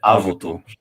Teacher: they stuck an additional u in there between the v and the t, so you get avutu.